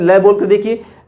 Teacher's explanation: ल जब बोलते हैं तो ऊपर जीवा टच करती है और दोनों ओर से हवा निकल जाती है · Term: पार्श्विक